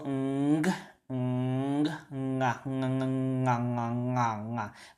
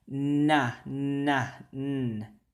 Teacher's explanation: That nga right there, ng, versus na, right? Nga, a velar nasal, right? And a non-velar nasal. So velar nasal, nga, nga.